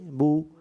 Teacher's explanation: اور جو زیر جو ادا ہوتا ہے یہ منہ اور آواز گرا کر, بی. اور پیش جو ادا ہوتا ہے وہ ہونٹوں کو گول کر کے نا تمام ملانے سے، نا تمام سے مراد مکمل بند نہیں کرنا، کچھ بیچ میں خلا رکھنا ہے، کھلا رکھنا ہے، اور سائڈیں اس کی ملیں گی جیسے بو.